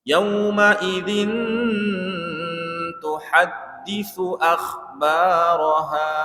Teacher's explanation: Yauma idzin, 2 detik ya. Din tanwinnya itu didengungkan selama 2 detik. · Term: ikhfa hakiki